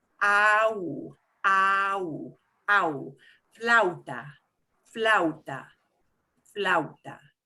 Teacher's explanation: if we have an ah and an oo next to each other, that is what they call a diphthong. And what that means is when I have 2 vowels, I will pretty much run them together as much as I can.